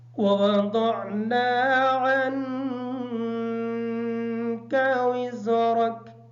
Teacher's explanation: عن کی نون کا غنہ مکمل کریں گے۔ وزرک کی جو زا ہے اس زا کو سختی کے ساتھ ادا کریں گے اور اس را کو پر پڑھیں گے